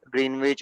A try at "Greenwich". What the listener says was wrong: So the W in Greenwich is silent, so we call it as Greenwich.